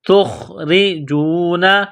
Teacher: را کے نیچے زیر ہے، را کو باریک کرنا ہے